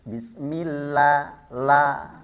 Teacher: ketika sebelum lafaz jalalah atau sebelum lafaz Allah itu kasrah maka dia tarqik.